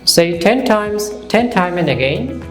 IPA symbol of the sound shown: t